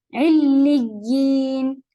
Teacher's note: پہلے ایک شدہ پھر لی، یا کی طرف جائیں گے تو آواز کو تھوڑا سا اونچا کیجیے گا، یعنی کہ ایک طرح کا زور اس میں آپ کے ہونا چاہیے.